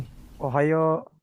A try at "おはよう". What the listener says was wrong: Bagus lulus ya.